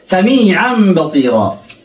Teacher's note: قلبنا التنوين إلى ميم إلى الميم لأنه الباء من حروف الإقلاب إذن نقلب التنوين إلى الميم